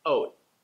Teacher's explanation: When you're hearing the word oat connected to other words, you might hear it sound like this, oat. You notice that there's no t sound at the end. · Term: soft landing